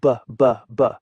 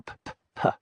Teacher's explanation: Put your hand on your throat and say b, b, b. You feel that vibration? Now whisper p, p, p. Nothing, right?